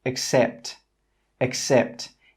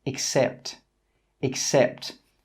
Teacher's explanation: In my accent, the first sound is that schwa sound.